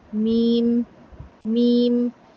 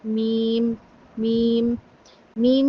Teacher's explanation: मीम भी दोनों होठों को मिलाने से अदा होता है। लेकिन मीम जो है वो अदा होता है। होठों के खुश हिस्से से। मीम मीम जो अंदर वाला तर हिस्सा होता है ना उसे थोड़ा सा बाहर वाले हिस्से पे अगर आप आएंगे तो आपका मीम अदा होगा।